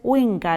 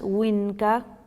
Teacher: llama n velar que es aquella en que el sonido parecido una n que hacemos entre la lengua y el paladar como más atrás